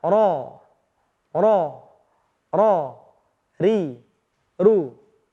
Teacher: ketika kita melafalkan huruf ro ujung lidah kita tuh bergetar ketika mengucapkannya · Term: taqrir